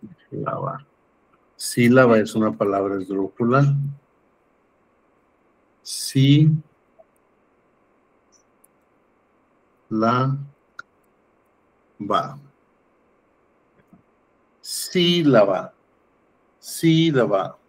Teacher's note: Última, penúltima, antepenúltima. Por lo tanto, aquí tenemos la sílaba tónica en la antepenúltima.